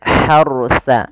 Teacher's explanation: rnya ditebalkan karena ada huruf ra sukun didahului dengan fathah